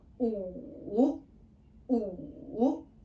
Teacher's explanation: the tone is our third tone, which is going down first and then up.